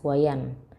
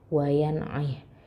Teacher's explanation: Bertemu dengan ain. Berarti idhar, dia jelas wayan. Idhar apa? Izhar halqi.